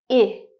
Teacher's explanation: your tongue is a little higher in your mouth, closer to the front. I. Stretch out your lips a little, and it's a short sound. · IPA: /ɪ/